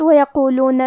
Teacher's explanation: کلمت وَيَقُولُونَ میں حرف القاف کی ادائیگی زبان کی جڑ اور تالو کے نرم حصے سے ہے. قاف حروف تفخیم میں سے ہے تو ہم یہ حرف کو موٹی آواز میں پڑھیں گے